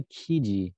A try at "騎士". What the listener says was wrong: Well, it's not saying kiji, it's saying kishi.